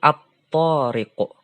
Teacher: Apabila ada alif lam ketemu huruf to, maka cara membacanya dileburkan atau diidghamkan. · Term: alif lam syamsiah